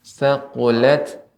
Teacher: tak sukun ini termasuk huruf hamus yang ketika sukun dia tetap ada bekasnya